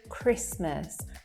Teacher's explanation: are many consonants together for example in the word christmas there you cannot hear that t sound there in between the s and the m